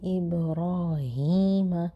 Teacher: با پہ قلقلہ ہوگا